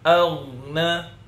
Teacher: Ghain itu sifatnya selain isti'la dia juga rakhawah. Dia ngalir, ya. Jadi tidak boleh agna, ya tidak boleh.